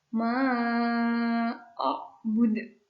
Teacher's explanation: A'bud. Dalnya itu kayak ada pantulan sedikit. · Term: qalqalah kubra